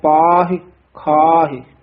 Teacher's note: ਇਹ ਖਾਹੇ ਪਾਹੇ ਲਾਵਾਂ ਨਹੀਂ ਲਾਉਣੀਆਂ ਸਿਹਾਰੀ ਬੋਲਣੀ ਹੈ